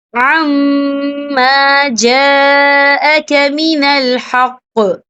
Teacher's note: یہ مد جو ہے مد متصل ہے. اس کی مقدار 4 عدد کے برابر ہے. تو ہم اسے 4 عدد کے برابر کھینچ کے پڑھیں گے. · تو یہاں پہ ٹھہرنا بہتر ہے. وقف کی صورت میں قاف ساکن ہو جائے گا